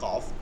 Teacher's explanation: 4 নম্বর মাখরাজ লিসান শুরু হইল জিব্বার গোড়া তার বরাবর উপরে তালুর সঙ্গে লাগায়